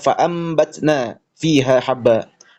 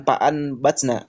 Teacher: mengubah nun sakinah ataupun tanwin menjadi huruf mim. secara pelafalan bukan secara tulisan. Disertai dengan ikhfa dan gunah saat bertemu dengan ba. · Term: iqlab